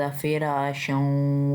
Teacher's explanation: रा को एक अलिफ जितना लंबा खींचना है क्योंकि उसके ऊपर खड़ी ज़बर है